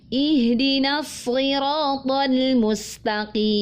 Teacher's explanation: huruf lamnya istifal, dia tipis, maka pastikan kita membacanya dengan tipis.